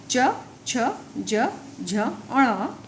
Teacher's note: इनके उच्चारण करते समय जिह्वा यानी टंग मुख के किसी भाग को स्पर्श करती है तथा हवा कुछ क्षण के लिए रुककर झटके से बाहर निकलती है। उन्हें स्पर्श व्यंजन कहा जाता है।